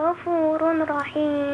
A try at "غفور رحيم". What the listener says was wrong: غفور رحيم. لا ما تقولش غفور، ما عندناش ايه نون هنا خالص.